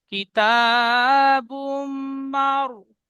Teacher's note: র সাকিনের পূর্বে যাবার এসেছে, তাই রকে পুর করে পড়তে হয়।